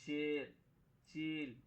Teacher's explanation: وہ یا ہے جس سے پہلے زیر ہو لیکن کھینچ کر نہ پڑھی جائے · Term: یا مجہول